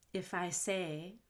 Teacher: i want to link the f and if to the i if i so it sounds like phi if i say if